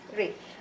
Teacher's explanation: Ra is not from the istifal letters, but it pronounced with tarqiq, softness, when it has a Kasra.